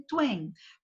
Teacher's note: O mesmo acontece com, que eu dei o exemplo lá, o to e o en, tuen, que se fundem em tuen, com o U funcionando como semivogal e a sílaba pronunciada em uma única emissão